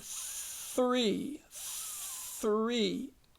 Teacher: th that's not voiced you don't use your voice